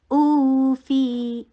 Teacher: حمزہ کو شدت کے ساتھ ادا کیجیے، دو حرکہ لمبا کیجیے